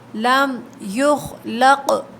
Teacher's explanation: قاف پہ قلقلہ ہوگا